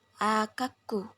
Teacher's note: dan yang terakhir ada asimilasi resiprokal yaitu ketika bicara dengan cepat suara n pada kata anakku bisa menjadi lebih mirip dengan suara k yang mengikuti Sehingga dalam pengucapan cepat kita mungkin mendengar akaku atau Akak selanjutnya